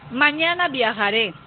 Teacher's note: Acá hay una oración con línea tonal descendente.